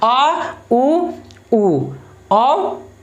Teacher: जीभ के सबसे पिछले हिस्सा के हेल्प से ये स्वर बोला जाता है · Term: पश्च स्वर